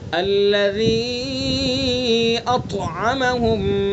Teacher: طا کے اندر صفت استعلا بھی ہے اور طا کے اندر صفت اطباق بھی ہے